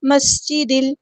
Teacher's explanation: سین کی سٹی ہم نے واضح کرنی ہے